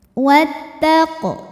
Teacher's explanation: Maka alif lam tidak dibaca atau dimasukkan disebut dengan Idgham Syamsi wattaq huruf qof disebut dengan Qalqalah Sugra karena sukunnya sukun asli · huruf qof disebut dengan Qalqalah Sugra karena sukunnya sukun asli dan ada di tengah bacaan dibacanya dipantulkan dengan pantulan yang kecil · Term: qalqalah sughra